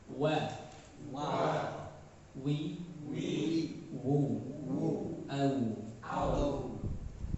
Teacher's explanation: Huruf waw ada di bibir, di monyongkannya.